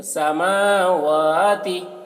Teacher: میم واو کو کھینچنا ہے، تا کو جلدی بولنا ہے